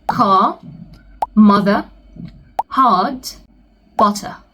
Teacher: if you're trying to sound British or you're trying to imitate the British accent, then you have to say ah. You don't say R, you say ah.